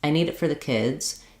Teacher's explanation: you can hear how kids is the longest, clearest word because it's stressed. It's the last content word in the phrase.